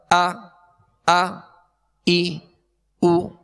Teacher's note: حمزہ میں ویسے بھی اس میں سختی ہے، جھٹکا ہے، اور اس کو ضغطہ کے ساتھ یعنی جھٹکے کے ساتھ ادا کیا جاتا ہے. جیسے حمزہ زبر آ ای او، ویسے اس میں سختی ہے، جھٹکا ہے.